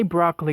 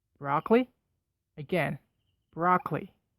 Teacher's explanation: the second syllable but not completely to make a cello sound that little uh sound there is called schwa a very common sound in the english language